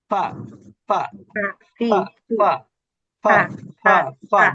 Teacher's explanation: নিচের ঠোট উপরের দাঁতের সঙ্গে স্পর্শ করে